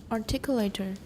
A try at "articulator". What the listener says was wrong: I don't hear the U in there um now it sounds right